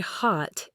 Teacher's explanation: In American English, the word hot is frequently pronounced with a more open a sound, just like the O in father or spot.